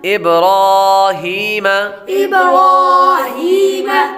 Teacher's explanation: را پر کھڑا زبر ہو تو را کو پر پڑھتے ہیں۔ آگے یا حروف مدہ میں سے ہے، اس لیے اس کو ایک الف یعنی 2 حرکات کے برابر کھینچ کر پڑھیں گے